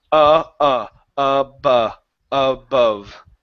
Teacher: so the A and the O are going to sound exactly the same